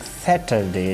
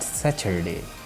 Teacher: It's ta sound here, not the cha.